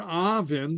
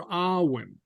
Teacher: the BH is pronounced like a V, though sometimes you might hear Awin, where the BH becomes silent